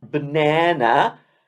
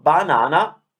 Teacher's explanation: we italians say banana with the same sound three times because it's consistent